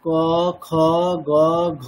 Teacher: এই প্রত্যেকটা বর্গের এই দুটি করে বর্ণ দ্বিতীয় এবং চতুর্থ এগুলো হচ্ছে মহাপ্রাণ বর্ণ